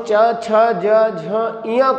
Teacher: जिह्वा जो होती है वो तालु को टच करती है, तालु को छूती है, और जब तालु को छूती है तो इसीलिए इसको कहा जाता है तालव्य व्यंजन।